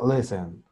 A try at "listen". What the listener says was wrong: La I que no suene tan I, que suene E. Le, listen, listen. Listen.